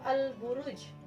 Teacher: Nah, di sini juga lam bertemu dengan huruf ba yaitu huruf qamariyah, maka lamnya dibaca jelas karena lamnya juga sukun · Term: alif lam qamariyah